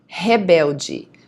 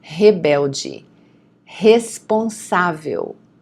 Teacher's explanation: the R at the beginning of the word is always going to be pronounced as a H, okay? The H sound.